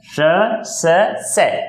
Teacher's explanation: इनको उच्चारण करोगे तो कभी भी किसी प्रकार की नाद या गूंज उत्पन्न नहीं होगी, गूंज उत्पन्न नहीं होती। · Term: अघोष